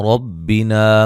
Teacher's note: اور نون مشدد پہ غنہ ہے، اور را کو باریک پڑھیں گے، کی یا مدہ ہے، وقفاً بڑی مد کے ساتھ پڑھ سکتے ہیں۔